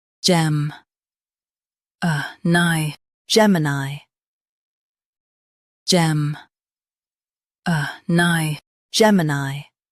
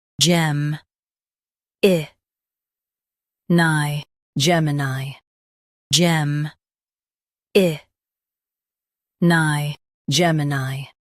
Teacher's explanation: US uses uh UK uses i